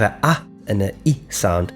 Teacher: So you have an ah and an I sound, and you combine them, you get to the sound I. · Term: diphthong